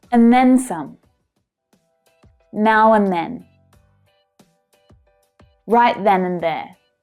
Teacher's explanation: Did you hear how in most of those expressions, then is stressed, said much more strongly than in the other fixed expressions?